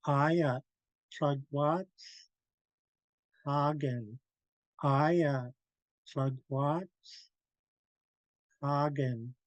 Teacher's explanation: you can feel the air blowing out the sides of your tongue